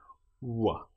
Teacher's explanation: our lips don't fully touch for this sound, and our teeth aren't really involved.